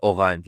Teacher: With the r, they make the r sound from the epiglottis.